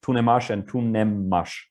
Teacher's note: here's another one where we have a geminate vowel on the morpheme boundary, and where it's important to pronounce it heavier in a way, like, or to like have it as in both syllables, like right, tunemash and tunemash.